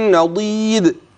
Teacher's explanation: الدال عند الوقف تقلقل